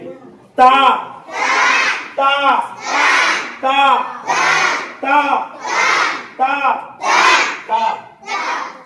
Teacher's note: تو تا جو ہے سامنے والا جو دانت ہے، سامنے والے دانتوں کی جڑ سے تا ادا ہوتا ہے